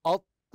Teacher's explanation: تنطق الميم مشدده مع غنه ظاهره بمقدار حركتين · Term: الميم المشدده